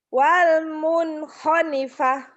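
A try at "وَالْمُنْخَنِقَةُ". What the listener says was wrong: Honikoh titiknya kedua. Titiknya kedua.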